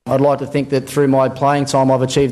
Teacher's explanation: the rising tone makes a statement sound like a query · the Australian habit of ending a sentence with a rising inflection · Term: high-rising terminal